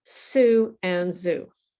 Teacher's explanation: So actually, sue and zoo are actually sister sounds. It's the same muscle movement, the same movement in your face, but there's one small difference, which is the vibration.